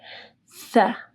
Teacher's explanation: سا جب آپ پڑھیں گے تو آپ کی زبان کی نوک اوپر کے دو دانتوں کے پاس آئے گی